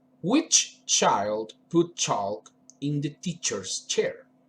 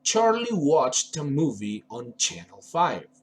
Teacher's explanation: the sound is interrupted so we cannot prolong it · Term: affricative sound